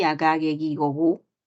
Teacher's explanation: la gue es un fonema ya sabes un fonema oclusivo velar sonoro